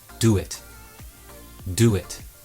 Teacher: Can you hear the sound that's intruding there? It's a w sound. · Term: intrusion